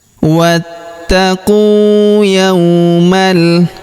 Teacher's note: huruf qu kita panjangkan 2 harokat karena waw sukun di depannya · Pada huruf ta-nya kita tahan dan kita tekan karena di atasnya terdapat tanda tasydid. Alifnya tidak dibaca, ini hamzah wasol, hamzah penyambung antara kata sebelumnya dan kata setelahnya